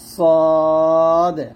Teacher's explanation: সদ এবং সিন এই দুটো মাখরাজ এক, জিহ্বার আগা নিচে দাঁতে লাগবে, নিচে দাঁতে, জিহ্বার আগা নিচে দাঁতে মাঝে লাগবে, সদ। আর এটা হচ্ছে সিন, সদ মোটা হবে, সিন পাতলা হবে।